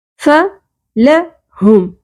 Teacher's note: ہے وعملوا الصالحات فلہم ہاں کے مخرج کا خیال رکھا کریں ہاں کی آواز کلیئر ہونی چاہیے اقصی حلق یعنی کہ حلق کے سینے کی جانے والے حصے سے ہاں ادا ہوگا